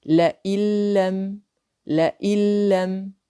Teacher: Nous remarquons qu'il n'y a aucun nasillement dans cette sorte de idgham, car la lettre lam fait partie des lettres de idgham sans nasillement.